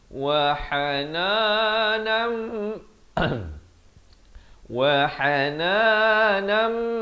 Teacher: Di sini tanwin bertemu mim idgham bi gunnah. Asalnya nun tanwin dua di atas bunyi nan.